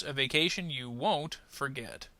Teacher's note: Won't is probably going to be emphasized a little bit more because being a negative word, it's probably going to be the word we need to focus on.